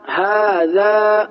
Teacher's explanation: الف مدہ کو ایک الف کے برابر کھینچ کر پڑھتے ہیں